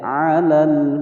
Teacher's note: Na pendek, alal langsung masuk ke huruf lam yang bertasdid, hukum bacaan al-syamsiyah